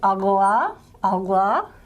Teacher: Technically, there is a velar lateral, agla, agla, written as a capital L, small capital L.